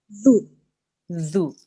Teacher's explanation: Your tongue should touch your top front teeth and make it a th sound, not a z sound. There shouldn't be a buzzing sound there. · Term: dhal